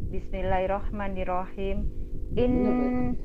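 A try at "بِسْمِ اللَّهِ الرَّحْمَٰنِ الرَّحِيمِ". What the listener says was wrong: Bismillahnya jangan buru-buru, santai aja.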